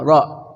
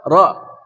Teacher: Israil, ra, nggak boleh ra ya, ra. Maksimal getaran 2, ra.